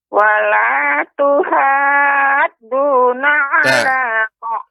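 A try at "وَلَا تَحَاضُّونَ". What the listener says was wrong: Huruf ta, Nek, bukan huruf tu. Wala tahadduna.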